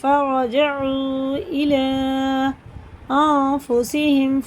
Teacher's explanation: یہ مد منفصل ہے اور را پورا ہے